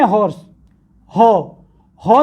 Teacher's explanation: हॉर्स बोलते हैं तो आपके फिर लिप्स राउंड शेप ले रहे हैं, यानी उसमें लिप्स का यूज हो रहा है।